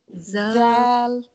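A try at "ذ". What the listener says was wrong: not zal. We have the same tha, same family. In which one you have to put out? You have to put part of your tongue is out. Yes, like tha, tha, tha.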